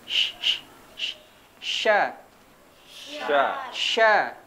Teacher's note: Huruf shin dia tidak menempel, tapi hampir menempel. Ya, sh, sh, sh. Dan menyebar suaranya.